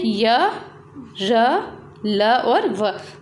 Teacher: इनमें जो मुख से इनका उच्चारण जब हम करेंगे तो हम जो वायु है वो मुंह के मध्य से निकलेगी, उसमें बिल्कुल कम रोक टोक होगी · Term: अंतस्थ व्यंजन